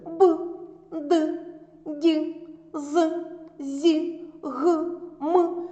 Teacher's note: вимовляються дзвінко за допомогою голосу та шуму